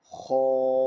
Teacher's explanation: خو کو موٹا پڑھیں گے، اور ابتدائی حلق سے خا نکلتا ہے، خو۔ اور جب بھی ہم کسی لیٹر کو موٹا پڑھیں گے تو ہونٹ ہمارے گول ہوں گے، اس کو انگلش میں فیٹ ورڈ بھی کہتے ہیں، فیٹ لیٹرز بھی کہتے ہیں، اور ماؤتھ فل لیٹرز بھی کہتے ہیں۔